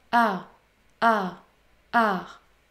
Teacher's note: Le son R peut être prononcé de 3 manières différentes en fonction de sa position dans une syllabe. Lorsque le R se situe à la fin d'une syllabe, il est extrêmement doux.